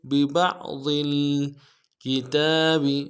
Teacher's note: عین کو موٹا کریں گے، ضاد کو موٹا کریں گے